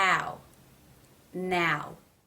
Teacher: pulling up towards the soft pallet in the back ow and the lips go from being pulled out to rounding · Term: ow as in now diphthong